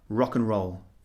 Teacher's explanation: these expressions are so familiar and so common that we say them very quickly almost like one word rock-and-roll it's almost become one word so the pronunciation is reduced